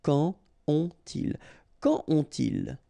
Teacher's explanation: So you don't make a liaison here between the two.